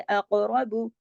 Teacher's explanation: अक़रबू, रा को भी मोटा पढ़ेंगे क्योंकि रा पे जबर है। अक़रबू, लेकिन बा को बारीक पढ़ेंगे और इतना ज्यादा लंबा नहीं करेंगे, सिर्फ एक हरकत, बा पेश बू।